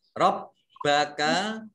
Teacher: rabbaka baknya dibaca double, ada tasjidnya.